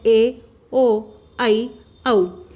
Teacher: अ और ई से मिलकर ए बना है, अ और उ से मिलकर ओ बना है, अ और ए से मिलकर ऐ बना है, अ और ओ से मिलकर औ बना है। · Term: संध्याक्षर